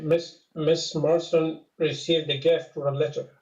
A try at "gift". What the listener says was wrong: But I think you're rushing through gift. I wish you'd spend a little more time with that